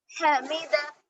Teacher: حمیدہ حلق کے درمیانے حصے سے آواز نکالیں گے